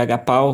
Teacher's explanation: você não tem aqui um ditongo, né? Você tem aqui, são duas vogais separadas